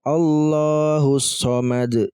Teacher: Maka cara membacanya itu langsung ya di huruf syamsiyahnya dengan ditasdid ya teman-teman. Jadi huruf alif dan lam ini kita tidak baca, langsung di shadnya. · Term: alif lam syamsiyah